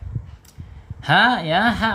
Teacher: H makhrajnya ada di tenggorokan paling bawah